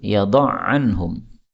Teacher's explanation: Wa yada'u anhum, ain ketemu ain boleh idgham seperti biasa, yada'anhum.